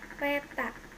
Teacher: Konsonan T, kriterianya bunyi apicoalveolar hambat tak bersuara, contoh kata peta.